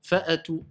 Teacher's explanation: Tout, ça doit être sec. Il n'y a pas de hams qui sort, il n'y a pas de son qui sort, il n'y a pas de résonance qui sort, il n'y a pas de fatha. On a compris, c'est juste un blocage.